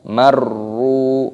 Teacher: Wa idza, panjang mad tabi'i ada tanda alifnya, marru, ro-nya tasdid, masukkan dan dipanjangkan